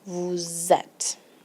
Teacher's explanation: And you'll hear this little liaison, the S. The sound of the S goes on to the sound of the E.